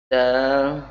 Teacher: ini menyentuhkan ujung lidah pada gusi dua gigi seri bagian atas, bukan dengan langit-langit